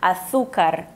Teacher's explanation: fala açúcar mas por exemplo na Espanha Tu vais ouvir açúcar aquele é o c o z enfim que eles têm a língua entre os dentes parecido com o th do inglês